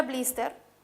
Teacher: la palabra blister que también es un préstamo pero ya incorporado también es grave tiene la mayor fuerza en la penúltima sílaba